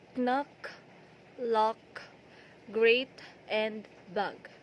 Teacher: And lastly, the k and g. The airflow is blocked using the back of the tongue against the soft palate.